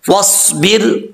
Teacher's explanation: स्वाद हरूफ मुस्तालिया में से है, पुर पढ़ा जाएगा और सिटी भी आएगी इसमें